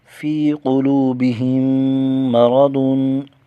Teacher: فِي قُلُوبِهِم مَّرَضٌ، قاف کو موٹا کریں گے، قلوبہم، واو ساکن کا واو مدہ ایک الف کھینچ کر پڑھیں گے، میم میں غنہ کر کے پڑھیں گے، ادغام شفوی ہوگا، پہلی میم کو دوسری میم میں مدغم کریں گے